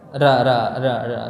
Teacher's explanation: dalam bahasa kita huruf ra-nya bukan dari ujung langit-langit tapi dari tengah